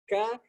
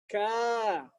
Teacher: Ka itu kan naik juga, tapi bukan pangkalnya, dia agak depannya qaf. Ka, dan itu suaranya lurus keluarnya. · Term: huruf qaf dengan kaf